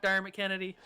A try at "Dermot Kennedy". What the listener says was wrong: Dermot. It was the mott for me. There was no need for the stressing of the mott.